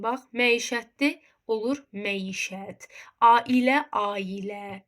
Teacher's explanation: Bu hərf birləşmələri görürsüzsə, bunların tələffüzündə bu hərf birləşmələrinin ortasına bir dənə y samit əlavə olunacaq.